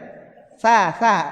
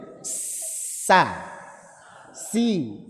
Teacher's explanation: ditempel tsa tsa itu kayak tsa [tertawa] tsa aneh jadinya ha ada celah yang sempit sehingga menjadikan suaranya tajam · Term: safir